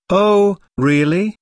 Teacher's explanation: notice the rising intonation on really this shows that the speaker is surprised